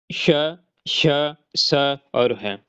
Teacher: इनका नाम ही ऊष्म है जिसका मतलब है गर्मी पैदा करने वाली। इनके बोलने से मुंह के किसी न किसी हिस्से से हवा रगड़ खाती है और फुफकार या सरसराहट की आवाज के साथ बाहर निकलती है। तो ये चार ऊष्मी व्यंजन है। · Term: उष्म व्यंजन